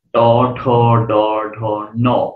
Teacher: ট, ঠ, ড, ঢ, ন, যে উপরে যে শক্ত অংশটাকে আঘাত করছে এটা নাম হচ্ছে মূর্ধা। এই জিহ্বার আগাটা উল্টে যায়, উল্টে গিয়ে মূর্ধাতে আঘাত করে উচ্চারিত হয়। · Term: মূর্ধন্য বর্ণ